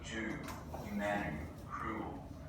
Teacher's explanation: Tennessee accents and Southern accents in general has something called goose fronting